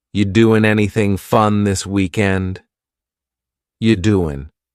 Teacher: The word you is reduced to ya. You doing, listen to that G at the end. You doing, it's gone.